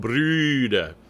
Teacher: It's an U sound. Means you're shaping your lips like an U, but you're saying an E through it.